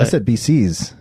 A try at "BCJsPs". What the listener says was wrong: No, it's just one C.